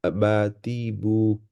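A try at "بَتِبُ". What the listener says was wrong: বা, প্রথম বাটা একটু টান হয়ে যাচ্ছে, হ্যাঁ? বাতিবু। বা আর টা সেম থাকবে। বাতিবু।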